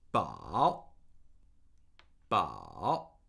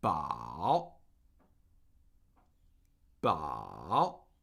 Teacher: Third tone, falling and rising tone.